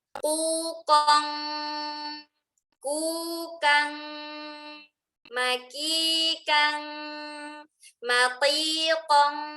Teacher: Huruf qaf dan kaf ini levelnya kuat, makanya dibaca ketika ada tanwin ketemu dengan qaf atau kaf, makanya dibaca menjadi kuat bunyi eng. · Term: Ikhfa level 1